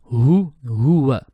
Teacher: So here the ha is a bottom throat letter. It's more deeper.